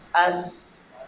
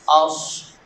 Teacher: صاد کو ادا کرتے وقت زبان کی جڑ پیچھے سے تالو کی طرف اٹھ جاتی ہے